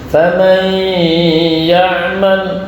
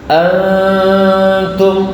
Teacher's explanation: Kualitas dengung yang dimiliki oleh nun sukun di rongga hidung berbeda kualitasnya antara faman ya'mal dengan antum.